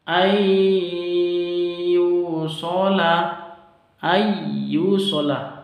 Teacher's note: nun sukun berjumpa dengan ya, maka disebut dengan idgham bi gunnah, bacaannya masuk langsung ke ya disertai dengan dengung